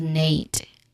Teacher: The sem, that's the next syllable or sound, which has a quick soft sound, and then you end it with Nate, which has a diphthong A, like a date.